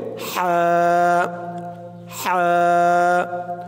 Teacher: হার আওয়াজটা গলার মাঝখান থেকে চিকন করে আনতে হবে, বলতে হবে হা হা।